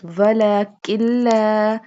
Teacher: Now here we do not pronounce noon because the next noon is sakin and the next word, which is lam, has tashdid. So we mix them together.